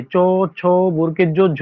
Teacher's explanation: চ বর্গের যতগুলো বর্ণ আছে চ, ছ, বর্গের জ, ঝ ই প্রত্যেকটার তোমরা উচ্চারণ করো। তোমাদের জিহাটা তালুতে স্পর্শ হচ্ছে। এইজন্য এলাকে তালু বর্ণ বা তালব্য বর্ণ বলা হয়।